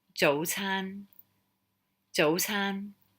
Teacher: dotan it's that middle um rising and then high tone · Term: middle rising and then high